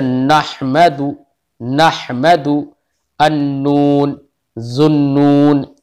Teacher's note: नून, देखो नून कहने में ही खुद ब खुद जबान उठ जाती है, ऊपर के लिए सिरा जबान ऊपर उठ जाता है तालू की तरफ · सिरा जबान तालू से मिलकर नून अदा होता है। सिरा जबान तालू से, जबान का सिरा बिल्कुल अगला हिस्सा जो होता है वो सिरा जबान कहलाता है।